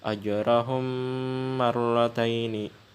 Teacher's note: ada lagi huruf mim sukun bertemu dengan huruf mim maka hukumnya idgham mimi cara membacanya dua harakat atau satu Alif